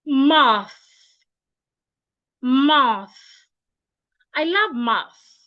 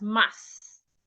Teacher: Your tongue should be in between your teeth, like this. My tongue is not behind my teeth. It is in between my teeth.